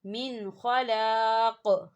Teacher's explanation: دیکھیں یہاں وقف ہوگا اور وقف کی صورت میں قاف جو ہے وہ ساکن ہو جائے گا، تو یہاں قلقلہ ہوگا